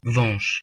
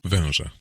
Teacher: Because Polish nasal vowels consist of an oral vowel followed by a nasal semivowel, they sound somewhat like nasal diphthongs